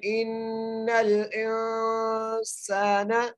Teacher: سین کی سیٹی کے ساتھ، اور سین کو ایک الف کی مقدار کھینچ کے پڑھنا ہے